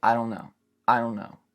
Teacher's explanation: we can't say strong T's like in I don't know